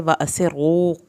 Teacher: را کو پر کرنا ہے اور را کے اوپر شد ہے اور پیش کے ساتھ شد ہے تو اس پہ ہونٹوں کو گول بھی کریں گے